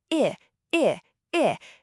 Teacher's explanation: The sound I is a short sharp sound. It sounds a bit like a tiny squeak.